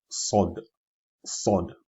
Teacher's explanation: But the difference is we see from this picture here, we are trying to raise the rear of the tongue now, to raise it on high, to strike and hit the roof of the mouth as well.